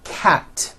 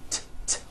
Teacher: Cat ends with an unvoiced T. T, t. 1 cat, 2 cats.